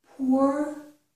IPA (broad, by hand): pʊɹ